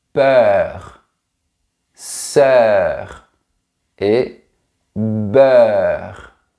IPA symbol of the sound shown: œ